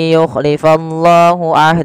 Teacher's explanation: kita panjangkan sepanjang empat harakat sebagaimana mad jaiz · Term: mad silah thawilah